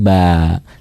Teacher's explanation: Mad itu bacaan panjang, tobi ya dibacanya biasa saja, hanya satu alif kan, 2 harokat. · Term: mad tobi'i